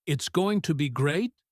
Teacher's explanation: His tone is likely flat, or perhaps the pitch goes up at the end of the sentences, making them sound like questions.